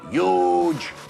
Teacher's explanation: for some odd reason Donald Trump doesn't pronounce the H in huge he ate treats it like a silent letter and instead says